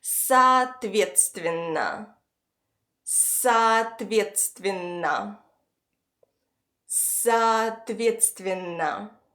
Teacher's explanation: we have a consonant cluster “тс” that must be pronounced as a Russian “ц”